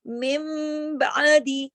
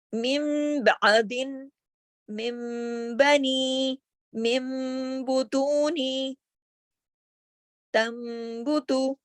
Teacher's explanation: اگر تنوین ہو یا نون ساکن ہو اور اس کے بعد با کا لفظ حرف با آ جائے، یہ شرط ہے، تو کیا ہوگا؟ نون کو میم سے بدل دیا جائے گا، اور کیسے پڑھیں گے؟ غننے کے ساتھ، اسے اقلاب کہتے ہیں۔